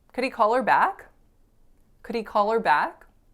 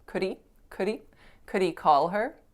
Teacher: you're allowed to drop that h if you're linking and just say the vowel the e sound